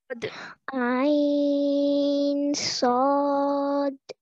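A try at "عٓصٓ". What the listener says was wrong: Good. Stretch for longer for the Sad. 4 counts each, okay?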